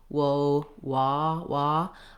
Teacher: the caught law vowel, which is a little more open than the O.